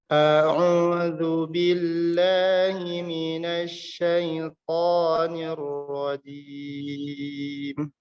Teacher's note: huruf hamzah di sini yang berharakat fathah dibaca dengan tipis, tidak dibaca dengan tebal.